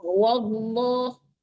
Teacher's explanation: jangan ditipiskan dulu baru ditebalkan